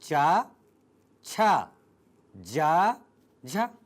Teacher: वे वर्ण जिन्हें बोलते समय ध्वनि में स्पर्श हो वह ध्वनि को संघर्ष करते हुए बाहर आना पड़े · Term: स्पर्श संघर्षी वर्ण